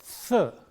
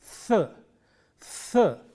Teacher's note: It is a dental sound produced at the upper teeth, th, th. The friction is very important here, and if you voice this sound, you get the.